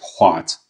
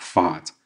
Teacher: it's mostly a V, but after another consonant like HV, SV, TV, I think it's a W sound. So I think, for instance, HVAT is hvat, not fat.